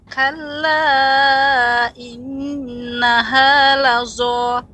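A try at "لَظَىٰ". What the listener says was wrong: Ya, pengucapan vo seperti zal. Vo. Jadi bukan pengucapan seperti lazo, ya. Jadi bukan lazo, ya, namun lavo. Vo. Ya, seperti the, vo.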